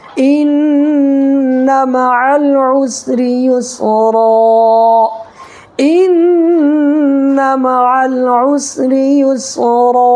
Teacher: ایک الف کی مقدار اپنی ناک کے اندر آواز کو چھپا کر کے رکھنا ہے. جیسے ان مع العسر یسرا, ان مع العسر یسرا, یہ را کو پر پڑھنا ہے, ٹھیک ہے, اس لیے کہ را کے اوپر زبر ہے, تو را پر زبر یا پیش ہو تو را کو پر پڑھیں گے.